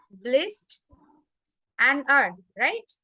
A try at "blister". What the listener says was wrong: No, again you will separate bliss and then t. Like in sister, the same. It is same, na? Sister and blister. Same.